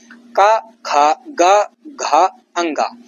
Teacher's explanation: कंठ वर्ण होता है इनका। गले से उच्चारण इनका होता है।